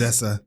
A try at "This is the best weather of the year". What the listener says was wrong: Z. I can hear that. This is the best weather. weather. Weather.